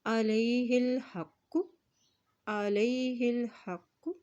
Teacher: शद है और ये काफ मोटा अदा किया जाता है।